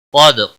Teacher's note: قاف کو موٹا پڑھیں گے، حروف مستعلیہ میں سے ہے، دال ساکن پر قلقلہ ہوگا۔